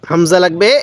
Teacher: এই নুনের সাথে নাকের বাঁশি দ্বারা গুনাহ করবেন